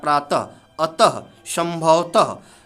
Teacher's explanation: अब त के बाद जो ह का उच्चारण हो रहा है, प्रातः, अतः, संभवतः, तो ये जो ह का उच्चारण हो रहा है अर्धध्वनि का, ये विसर्ग होता है।